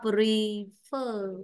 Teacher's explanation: Vậy thanh ngang ở âm tiết 2. Nên trọng âm rơi vào âm tiết 2.